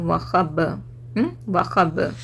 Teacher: बा पे रिबाउंड हो रही आवाज़ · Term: खलखला